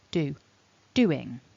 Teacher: there's a stress in doing because it's a two syllable word we want to have a stronger emphasis on the first syllable